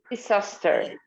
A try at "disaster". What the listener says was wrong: Again, look, the Z. In English, we have this sound a lot. Z. Disaster. Disaster.